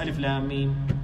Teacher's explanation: The alif is correct, the lam is correct, the mim is correct, but no ghunna and no mad. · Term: hidden mistake